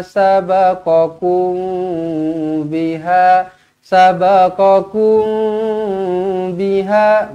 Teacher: fahisata Ma sabaqum biha sabaqum biha mim qong bertemu dengan ba Ikhfa Syafawi dengungkan dua harakat